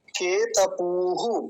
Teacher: केतपूः लंबा खींचेंगे क्योंकि पकार पर दीर्घ ऊकार है, बड़े ऊ की मात्रा है